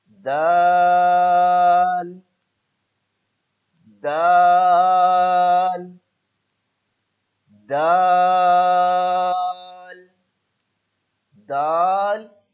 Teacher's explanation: زبان کی نوک جب اوپر کے اگلے دو دانتوں کی جڑ سے لگے